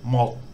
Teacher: because it's a final consonant it makes a unreleased t sound not not a d sound as it would as an initial consonant